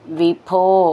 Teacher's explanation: ഭോ എന്നുള്ള അക്ഷരം നന്നായിട്ട് ഊന്നി പറയണം.